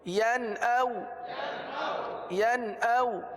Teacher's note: نون ساکن کے بعد حمزہ ہے، حمزہ حروف حلقی میں سے ہے، لہٰذا اظہار کا قاعدہ ہوگا، یعنی غنہ نہیں کریں گے